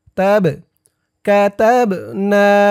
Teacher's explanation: বা কলকলার হরফ ধাক্কা দিয়ে পড়তে হবে